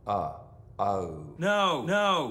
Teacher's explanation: instead of o in know we get a starting point that's lower in the mouth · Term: goat vowel